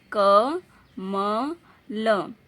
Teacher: कमल में आधा क है धन अ है क जब बोलते क व्यंजन को प्रोनाउंस करते उच्चारण करते हैं तो अ अ ध्वनि आती है